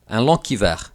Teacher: And lastly, in rare occasions, you might even hear the G pronounced like a K. For example, un long hiver instead of un long hiver.